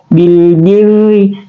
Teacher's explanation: dia juga adalah ra yang tarqik yang tipis